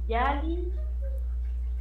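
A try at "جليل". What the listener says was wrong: Y vamos a extender la I por los dos puntitos y la última L, eso nomás el sonido de L porque el sukun. Yalil. Yalil.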